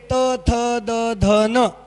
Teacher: काही शब्द दंत्य असतात म्हणजे त्या शब्दांचा उच्चार करताना दातांचा उपयोग केला जातो